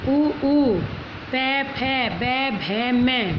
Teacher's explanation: ये बोले जाते हैं ओष्ठ से, क्योंकि हमारे दोनों होठ आपस में मिल रहे हैं, होठों का मूवमेंट हो रहा है, इसलिए ओष्ठ से।